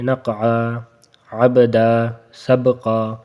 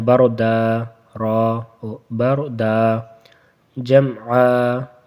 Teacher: نقعا، عبدا اور سبقا میں قلقلہ ہوتا ہے، اور بردا اور جمعا میں قلقلہ نہیں ہوتا